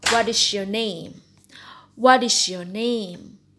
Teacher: Information question or WH question using falling intonation.